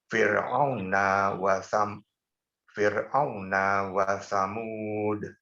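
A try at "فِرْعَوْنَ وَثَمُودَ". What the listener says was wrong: Tenangkan untuk menghabiskan ro dengan pelan-pelan. Nikmati saja Pak ro yang tarakik ini. Fir'au, tidak perlu terburu-buru. Fir'auna wa Samud.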